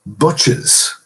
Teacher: Butch, however, the possessive of Butch is Butches, so we have to put a vowel in there, an epenthetic vowel in